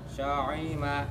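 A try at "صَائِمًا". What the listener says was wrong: Nah, ini hamzah, Pak, bukan ain. So'ima. Kayak alif aja. So'ima. Pada saat so'ima, tidak berarti so'ima. Itu nanti jadi ain.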